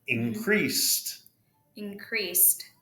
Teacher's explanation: CE, remember, is S sound, right? Yes, S sound. Which would make a T at the end.